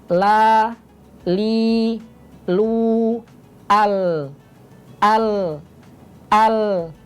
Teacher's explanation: depan sekarang di area k ujung tapi di bagian Sisi ini ujung lidah tapi di bagian Sisinya yaitu huruf lam suaranya seperti ini la li lu al al al jadi ini